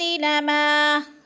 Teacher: من الحجارہ، من الحجارۃ لما، لما الف مدہ ہے، الف خالی سے پہلے میم کے اوپر زبر ہے تو الف مدہ کھینچ کر پڑھنا ہے